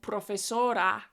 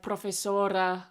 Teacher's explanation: I replace some of the weak syllables with schwas in Spanish.